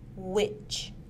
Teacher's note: W is made using the lips. It is a gliding sound and is voiced. The vocal cords vibrate.